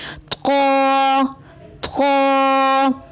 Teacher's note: طا کی ادائیگی میں زبان کی نوک کو سامنے والے اوپر کے دو دانتوں کی جڑ سے لگا کر اور زبان کے پچھلے حصے کو تالو کی طرف بلند کرتے ہوئے موٹی آواز میں پڑھیں